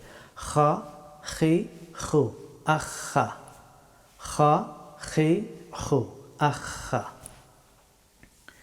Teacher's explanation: খা হরফটি উচ্চারিত হয় গলার উপরের অংশ থেকে